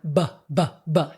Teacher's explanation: Bring my lips together, build up air pressure behind my lips, but I have my voice turned on. BBB. That's the B. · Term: voiced